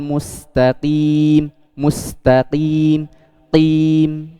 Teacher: Jadi penebalannya bukan dari bibir, akan tapi dari ujung lisan yang naik, yaitu huruf qaf.